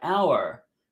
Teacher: hour starts with an H but the H is silent so it's a vowel sound